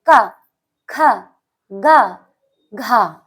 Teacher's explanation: तो ये कंठ से निकल रही है तो ये कंठ ध्वनि कहलाती है